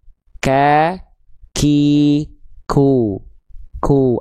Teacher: Cuman titik nempelnya yang beda. Kalau huruf kaf disentukannya ke langit-langit yang lunak dan langit-langit yang keras. · ada ada percikan nafasnya sedikit